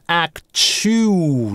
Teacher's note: долгий /uː/, дальше ull, на гласной начинается слог, связываем их через linking [w]